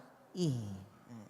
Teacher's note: h enggak keluar dari perut ataupun di sini tapi di pangkal tenggorokan